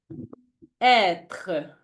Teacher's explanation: it is like the open e in bet but longer and more stressed